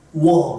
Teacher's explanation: 우를 발음하려고 입모양을 만들어 놓고 뭐를 발음해요? 어를 발음하면 워 이렇게 된다는 거죠.